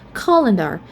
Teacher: We have the schwa at the second syllable. That's why we stress on the first syllable.